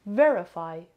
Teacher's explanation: Verify has 3 syllables and the stress is on the first syllable.